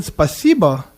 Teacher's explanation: I'm putting more stress over the second part of the word